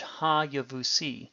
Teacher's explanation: Even though written without the Doggish forte, the word is still pronounced with a vocal schwa. The second syllable, which has the vocal schwa, is its own syllable.